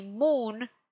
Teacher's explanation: If I say moon, my M is going to be closer and it's going to purse more because it's getting ready for an U shape.